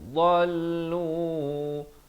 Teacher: dha ni makhrajnya di tepi lidah kita